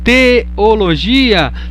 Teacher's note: há 2 vogais juntas, o E e o O, mas que estão em sílabas diferentes. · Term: hiato